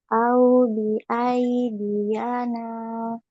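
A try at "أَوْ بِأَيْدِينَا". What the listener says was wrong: Dina. Ya-nya tidak berharokat ya. Ya-nya sebut. Au bi aidina.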